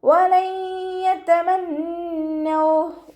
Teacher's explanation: നൂനിന് ശബ്ദ വന്നു. ഒന്നനാണ്, നന്നായിട്ട് മണിച്ചു കൊടുക്കുക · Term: അക്മൽ ഒന്നനാണ്